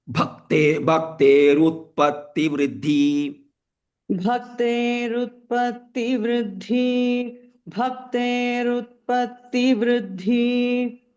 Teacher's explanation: So here bhaktehe, that visarga is there, that is replaced by ru. So when you chant, you chant with ru only.